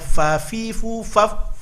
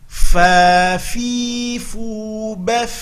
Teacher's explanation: hati-hati nampakkan mengalir nafas ketika membunyikan, karena ada sifat hamas pada huruf fa